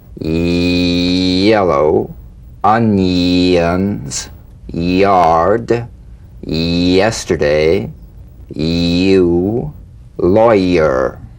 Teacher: The Y, tongue front consonant. A touch of the Y buzz before another vowel.